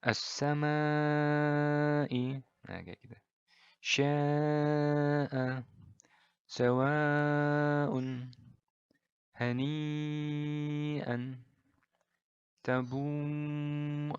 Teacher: mad wajib muttasil adalah 4/5 harokat jadi lebih panjang